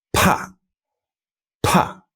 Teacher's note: T, P, and K in Chinese are much more heavily aspirated. They have more air behind them, and they are lightly aspirated in English.